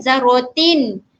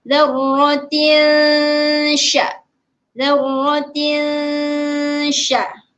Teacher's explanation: Sya iaitu dia duduk dalam kelompok ikhfa hakiki. Kita perlu dengungkan dia, menyembunyikan sedikit bunyi tanwin tersebut dan kita lebihkan bunyi huruf sya.